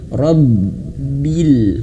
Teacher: Rab banya ditekan karena dia tasydid.